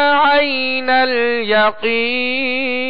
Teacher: عین کی ادائیگی وسط حلق سے کریں گے